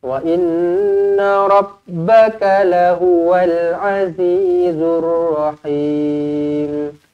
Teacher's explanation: Wa inna nun sabdu di sini dibaca dengan dengung 2 harakat wajibul gunnah. Rabbaka lahuwal pendek Rabb, lekatkan ba sabdu.